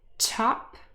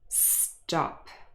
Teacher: the first example is aspirated and the second one is unaspirated